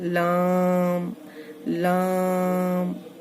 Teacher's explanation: जबान की नोक और ऊपर के सामने के चार दांतों के मसूड़े से अदा होता है।